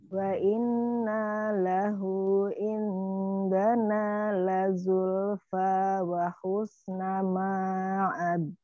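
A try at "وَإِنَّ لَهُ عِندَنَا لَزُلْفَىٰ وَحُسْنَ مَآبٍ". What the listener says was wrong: Ma'ab. Wa inna, jangan dipanjangin, tahan aja. Ainnya Umi.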